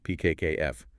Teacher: if you put your hand gently on your throat while you make those sounds, you won't feel any vibration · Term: voiceless sounds